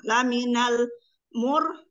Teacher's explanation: ada ro sukun yang diawali dengan domah. Bacaan dibaca tafhim atau tebal.